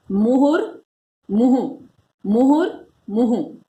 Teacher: विसर्ग संधि होने के कारण इस विसर्ग का र बनकर यहां पर ये आ जाता है